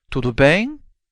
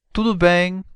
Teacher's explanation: Just raise your voice to make it a question and leave it flat or falling for statements